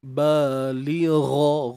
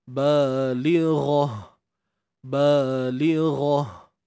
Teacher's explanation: Gha tebal. Matikan ta dengan ha.